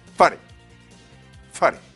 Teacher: Vous l'aurez remarqué, j'insiste mais brièvement sur la syllabe fa. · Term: l'accent tonique